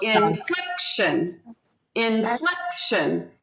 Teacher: second syllable and shun is the third syllable so inflection inflection so the second syllable gets the accent